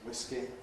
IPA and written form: ˈwɪski (whisky)